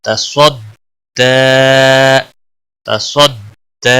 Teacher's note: دال صاد کے ساتھ ملے گا، صاد کو بھی پر پڑا جائے گا